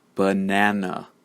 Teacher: it is the second syllable the middle syllable which is stressed the first and the third are unstressed and they use the schwa sound